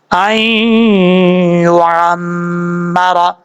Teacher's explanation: میم کے اوپر شد غنہ کریں گے ایک الف کی مقدار